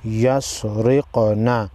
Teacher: لام الف زبر لا، یاسین پیش یس، لا یس را، قاف زیر رق، نون زبر نا، یسرقنا۔ قاف حروف مستعلیہ میں سے ہے، موٹا پڑھیں گے، اور قاف حروف قلقلہ میں سے بھی ہے، ہلا کر پڑھیں گے